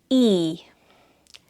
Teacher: So it's the same sound as i just longer.